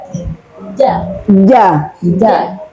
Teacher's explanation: huruf ja itu sifatnya tidak berhamas. Tidak berhamas. Tidak berangin.